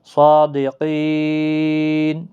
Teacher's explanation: جب وقف کریں گے آپ تو نون کو ساکن کر دیں گے